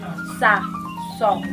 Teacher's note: Huruf sa itu dibaca murkukon atau lebih tipis, sedangkan huruf so itu dibaca mufakhomun atau tebal. Dan pada saat pengucapan huruf sa dan so itu tidak terjadi pergesekan pada gusi, dia terjadinya pergesekan pada gigi saja